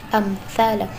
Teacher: Cara membaca idhar syafawi yaitu huruf mim mati dibaca dengan jelas, tidak dengung